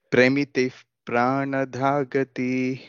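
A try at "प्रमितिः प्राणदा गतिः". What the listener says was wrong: There are no Mahapranas here, all are Alpa Pranas. Pramitif Pranadagatihi. Is not pre, pra, pramiti. It is not pre, premiti, pramiti. Pramiti.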